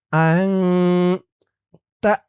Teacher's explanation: এখানেও ইকফা গুন্না, নুন সাকিনের পরে ইকফার হরফ তা